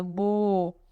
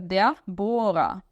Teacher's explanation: esse O é alongado, bo. E o ER no final tem som de A, por isso que fica der Bohrer.